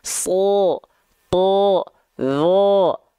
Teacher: ketika dia berharokat fathah, keluarnya bunyi vokalnya adalah bunyi vokal O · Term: huruf yang tebal